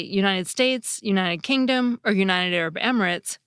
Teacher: The /t/ in “United” is in a perfect position to become an alveolar flap, but in addition, it comes soon after an /n/. In that situation, some speakers find it easier to just leave their nasal passage open when they say the /t/ sound, instead of closing it off again so soon. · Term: nasal alveolar flap